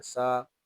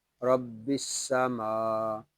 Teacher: سین حروف صفیریہ میں سے ہے، اس کو ادا کرتے وقت سیٹی کی آواز نکلے گی